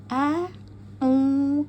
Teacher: pada Hamzah pangkal tenggorokan